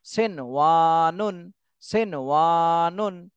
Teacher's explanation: একই শব্দের মধ্যে থাকলে সেখানে আর গুন্না করতে হবে না, স্পষ্ট পড়তে হবে।